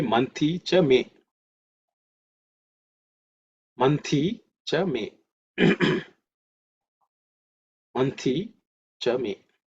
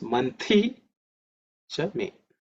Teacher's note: the Tha is aspirated because it's the second letter in the Tha Varga